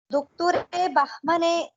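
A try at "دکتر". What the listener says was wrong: दुक्तुर, दुक्तुर के बाद कसरे नहीं है।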